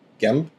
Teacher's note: Sometimes you'll hear this with an N, sometimes with an M. It depends on the person speaking. Uh I usually use M, like gamb.